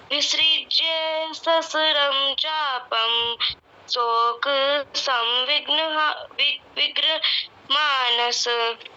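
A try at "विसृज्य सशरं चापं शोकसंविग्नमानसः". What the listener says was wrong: सहस्रम बोला ये भी गलत, और शोक बोला ये भी गलत। दोबारा बोलो विसृज्य वाला।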